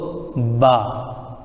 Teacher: یہ با جو ادا ہوتا ہے دونوں ہونٹ مل کر کے، یہ جو ہمارا ہونٹ ہے اگر ہم دونوں کو ملائیں گے، جیسے یہ دیکھیں گے تو با، یہاں سے با ادا ہوتا ہے، اور اسی سے مل کر کے میم ادا ہوتا ہے۔